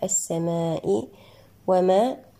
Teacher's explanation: الألف ما الطبيعي وصلا ووقفا يمد بمقدار حركتان